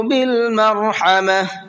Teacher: بالمرحمہ را کو بھی پر کر کے پڑھنا ہے اور حا کو حلق سے نکال کر کے پڑھنا ہے